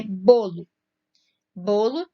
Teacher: Bolo tem a sílaba tônica ali, o bo. E o bo de bolo é a penúltima sílaba.